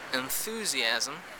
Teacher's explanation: that nasal is actually dental a dental nasal instead of the alveolar nasal